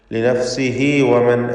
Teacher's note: ചേർത്തോതുമ്പോൾ ലിനഫ്സിഹി വമൻ എന്ന് ഹാ ദമീറിന് മദ്ദുസ്സിലത്ത് സുഗ്റ 2 ഹറക്കത്തിൻ്റെ അളവിലുള്ള ദീർഘം നൽകേണ്ടതാണ്.